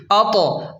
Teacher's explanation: حمزہ طا زبر اط، اط، طا حروف قلقلہ میں سے ہے اس لیے یہاں جھٹکا دیں گے